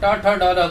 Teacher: तो आप देखेंगे हमारी जो टंग है, हमारी जो जीवा है, वो पलट रही है, मूर्धा में स्पर्श कर रही है